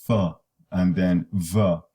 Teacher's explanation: So the labiodental fricatives, you require to produce them, the lower lip in contact with the maxillary incisors, f, and then v, and the orbicularis muscle, that is the inferior area, that's the lower lip.